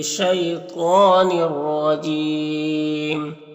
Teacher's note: پر تنوین کے بعد را ہے حروف یرملون میں سے تو ادغام تام ہوگا، بغیر غنہ کے پڑھیں گے